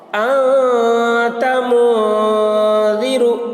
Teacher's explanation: نون کی آواز کو ناک میں چھپا کر پڑھنا چاہیے، نوک زبان تالو سے ہٹا کر، جیسے اردو میں پنکھا کے نون کو پڑھتے ہیں۔ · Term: اخفا